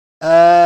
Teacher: There's no tashdid. So on the Lam, you're just going to touch it and you can move on. Very light.